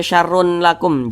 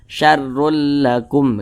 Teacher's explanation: bacanya itu dengan cara memasukkan ya kemudian tidak disertai dengan dengungan jadi dia tidak berdengung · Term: idgham bila ghunah